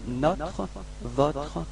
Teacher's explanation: this O is not that closed, okay, it's quite open